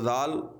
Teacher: जबान का सिरा और ऊपर के दांतों के अंदरूनी किनारे से अदा होता है तो आपने जबान का सिरा ऊपर के दांतों के साथ लगाना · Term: हरफे ली सविया